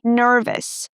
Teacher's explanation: Instead, we say us. So we pronounce, again, that neutral schwa sound, You don't move your lips, you just make the sound, us